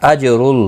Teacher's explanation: جیم ساکن پر قلقلہ ہوگا اور پیش کی وجہ سے پر پڑا جائے گا